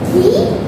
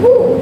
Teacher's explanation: These are both high vowels, and the E is a high vowel, front vowel, while the U is a high back vowel